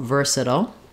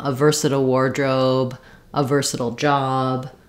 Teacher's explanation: the flap T and the dark L